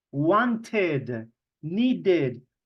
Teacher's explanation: Para los verbos regulares que terminan en la letra T o D, sí vamos a pronunciar la E y la D como si fuera id, right? Wanted, needed, como si la ed fuera otra sílaba.